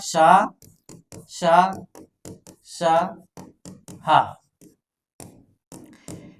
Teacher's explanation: इनके उच्चारण में अंदर से हवा का घर्षण होता है। इसीलिए गर्म हवा निकलती है। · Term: ऊष्म व्यंजन